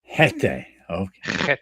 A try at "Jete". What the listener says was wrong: Jete. No, it has to come from the throat.